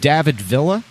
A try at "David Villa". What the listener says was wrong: If anything, you could enunciate the L's a little harder.